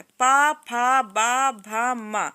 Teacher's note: प, फ, ब, भ, म। ठीक है? ये ओष्ठ से निकलता है